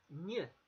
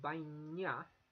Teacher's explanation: And that's because it's got an I before it. Now in Basque, if an N has an I before it or immediately after it, then it's pronounced as a ny.